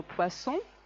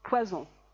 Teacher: Poisson, sorda, S sorda. Poison, S sonora.